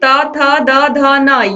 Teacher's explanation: इसके बाद देखिए त वर्ग त, थ, द, ध, न, ये दांतों को स्पर्श करते हैं, दंत व्यंजन हो गए